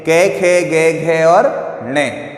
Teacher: जैसे कि हम यदि पहले जो 5 अक्षर जो आपके दिए हुए हैं कै, खे, गे, घे और ने, यदि हम इनको ढंग से बोलते हैं तो हमें पता चलता है कि बोलते समय इनकी जो ध्वनि है वो हमारे कंठ से निकलती है